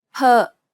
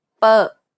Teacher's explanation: It is not the same as the B sound, however, which is much harder. This P sound is said without aspiration, meaning you should not release a burst of air when pronouncing this sound.